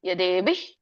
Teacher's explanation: ದೊಡ್ಡಭ ಇದೆ ಮಹಾಪ್ರಾಣ ಇದೆ